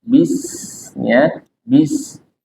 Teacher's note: huruf sin dia punya sifat hamas, maka keluarkan udaranya